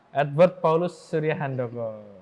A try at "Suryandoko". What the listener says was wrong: Nggak pakai H.